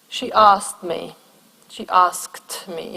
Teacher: In this case, it's the k that gets dropped.